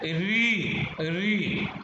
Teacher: फिर है री, री, एकदम हमारी जीभ जो है बिल्कुल ऊपर को घूम जाती है जब हम बोलते हैं री और री, तो ये है मूर्धा।